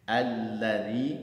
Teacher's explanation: Za, ujung lidah kita keluar sedikit dari batas gigi